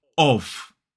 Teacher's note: it's that O vowel sound, the same vowel sound we see in sock, and V, which is a voiced sound. Now, to make sure you're making that sound correctly, put your finger here and you should feel a vibration. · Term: strong form